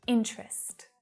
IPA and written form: 'int rəst (Interest)